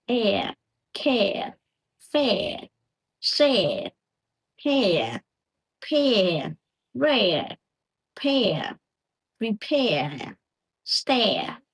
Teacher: start with E, like bed, best. Okay, glide quickly into the R sound.